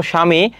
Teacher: শব্দের আদিতে ব ফলা যুক্ত হলে ব অনুচ্চারিত হয়।